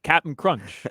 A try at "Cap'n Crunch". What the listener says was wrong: Because it is spelled that way, C-A-P apostrophe N, but everyone knows it's Captain Crunch. Well, you said Captain Crunch. You are saying Cap in Crunch.